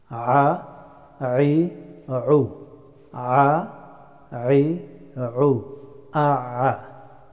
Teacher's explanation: The letter of ayn pronounced from middle of the throat.